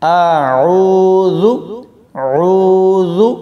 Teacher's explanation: عین کو واو کے ساتھ ملاتے ہوئے کھینچیں گے، واو مدہ ہے تو یہاں پر اس کو کھینچ کر پڑھنا ہے۔ اعوذ عوذ، بہت سارے لوگ زال کی جگہ زا پڑھ دیتے ہیں، یعنی زا سیٹی والا، تو ایسا بالکل نہیں کرنا۔